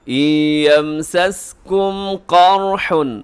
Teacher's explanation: قر میں قاف بھی موٹا، را بھی موٹا۔